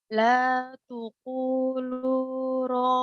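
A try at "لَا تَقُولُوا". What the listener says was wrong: La takulu bukan la tukul.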